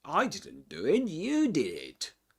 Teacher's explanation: So, we stress the personal pronouns, the subjects. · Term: contrastive focus